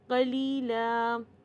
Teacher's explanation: قلیلا، اب دیکھیے یا ساکن سے پہلے لام ہے، یا ساکن سے پہلے زیر ہے تو یہ یا بالمد ہوئے گا